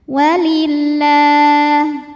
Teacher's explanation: lam jalalah dibunyikan secara tarqik sebab huruf sebelumnya berbaris kasrah maka dibacanya tipis